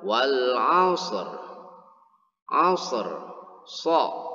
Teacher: 'Ashr, so, ya penyebutannya so, yaitu ujung lidah ketika mengucapkan atau melafalkannya harus ada desisannya atau ada siulan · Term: shofir